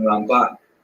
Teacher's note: Rambam is pronounced with the emphasis on the first syllable, Rambam, and Ramban is pronounced with the emphasis on the second syllable